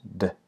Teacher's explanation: being used as well uh this time behind the teeth and it's voiced so there's vibration in the throat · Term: D consonant